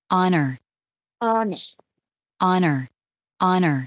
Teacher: la palabra honor empezaba con la H sin embargo yo no la voy a pronunciar